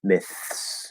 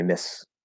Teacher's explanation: fully clearly enunciated, fully pronounced, you're going to hit the TH, you're going to hit the S. It's going to be nice and clear.